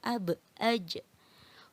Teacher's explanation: Kolkolah itu anak-anak artinya memantul. Jadi nanti cara bacanya harus memantul ya.